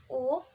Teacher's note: tinggi belakang dan bulat